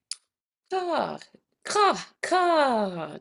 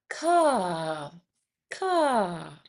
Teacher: ka, ka, just like that back of the throat. Ka, ka.